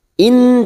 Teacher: nun sukun bertemu nun idgham bi gunnah, masuk dan mendengung, masuk pada huruf nun. In dan ditahan selama 3 harokat.